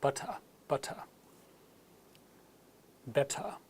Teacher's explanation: the final vowel sound is lengthened a little and the T is said clearly